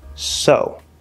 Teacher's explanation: the s sound plus the o vowel sound oh so now because this is not stressed we can actually reduce it especially in fast speech to more like a schwa sound